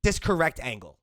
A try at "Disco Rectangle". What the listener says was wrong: Disco rectangle. It's 2 words. disco rectangle. There's only one R, so it's not correct.